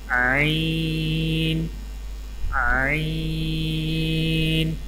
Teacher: عین کی ادائیگی میں زبان کی جڑ کو حلق کی طرف مضبوطی سے دباتے ہوئے باریک اور رگڑ کھاتی آواز میں پڑھیں